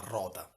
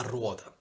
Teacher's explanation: la vocale O si è aperta e si è formato il dittongo uo, cioè da rota a ruota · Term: dittongamento spontaneo